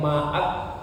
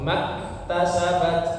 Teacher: Setelah huruf ma ada hamzah yang tidak dibaca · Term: Hamzah wasal